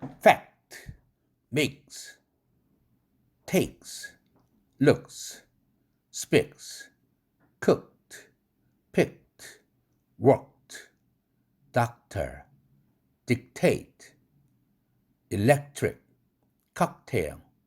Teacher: 프트크는 뒤에 자음 오면 딱 멈춰라. unrelease로 해라. 비개방음 크 사운드 연습입니다.